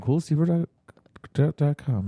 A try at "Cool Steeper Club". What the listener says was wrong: You said Cool Steeper Club pretty poorly right there. Cool Steeper. It's like stepper with an extra E and then one P. Steep. Yeah, like a steep set of stairs.